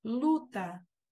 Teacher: O U está lá atrás, ele não está no bico.